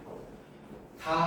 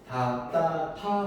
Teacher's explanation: 자, 위치를 따지자면 이쪽에서 나는 소리고요. 앞니 뒤쪽을 한번 혀로 톡 때리고 가는 소리가 잇몸 소리야. 다 한번 발음해. 다를 발음하면 앞니가 앞니의 맨 앞쪽이 앞니 뒤를 톡 하고 치고 가는 거 볼 수 있어요.